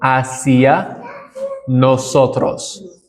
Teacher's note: Recall that the H is silent in Spanish.